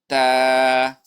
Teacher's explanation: تا به د دوه بره غاښونو د ویښونو نه او د ژبې د سر نه ادا کېږي